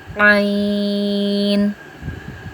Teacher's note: عین وسطی حلق سے ادا ہوتا ہے